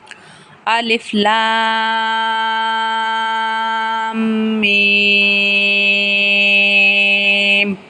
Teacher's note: یہ جو لام کے اوپر مد نظر آ رہی ہے، اس مد کو بولا جاتا ہے مد متصل، اور یہ مد 5 الف کے برابر لمبی کی جاتی ہے